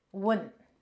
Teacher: Not high tone when, but low tone wun.